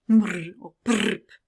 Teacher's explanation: And if I were to categorize trilling phonetically as a sound, I would say it's a nasal trill. Nasal because the airflow runs through the nose, and trill because it has this vocal organ vibrating against another.